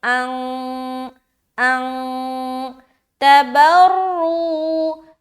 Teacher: ہم یہاں پر غنہ نہیں بلکہ اخفا کر رہے کیونکہ نون ساکن سے پہلے، نون ساکن کے بعد تا ہے